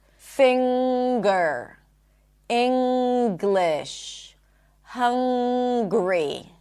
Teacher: It's not that you pop the G. There is a G sound in addition to the M sound.